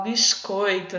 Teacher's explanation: E aí o som do S fica parecendo o som do X